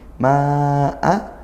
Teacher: panjangnya 2 alif atau 4 harokat, kita baca panjang karena dia bertemu hamzah madnya, kemudian hamzahnya di lain kalimat, maka ini mad jaiz munfasil.